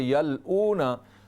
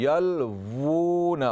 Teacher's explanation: वाव हरूफ शफवी में से है, वो होंठों से अदा होता है। होंठ यहाँ देखें, और हल्क जो है गला, वो कितना दूर है।